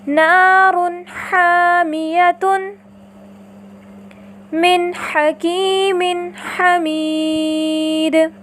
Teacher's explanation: اسی طرح اگر نون التنوین کے بعد حرف ہا آ جائے تو ہم نون التنوین کو بھی اس کے مخرج اور صفات کے ساتھ ظاہر کر کے پڑھتے ہیں، جیسے نار حامیۃ من حکیم حمید۔